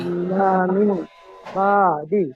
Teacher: নুন সাকিনের পরে বা এসেছে ইকলাব হবে নুন সাকিনকে মিমের দ্বারা পরিবর্তন করে পড়তে হবে